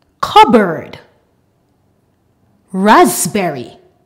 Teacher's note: When we have P and B together in the middle of a word, the P is silent. For example, cupboard, raspberry. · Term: silent p